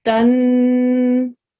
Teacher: We're going to press down on the noon. We're going to do a 2-second ghunna.